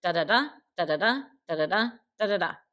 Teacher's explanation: on each foot is at the end so it's an anapest two short syllables followed by a longer syllable with more emphasis · that are anapestic words but what he will do is um have two short syllables and then the emphasis is on the third · So it's an anapest, 2 short syllables followed by a longer syllable with more emphasis. And tetrameter, tetra being 4, tetrameter just means that we have 4 of these little units.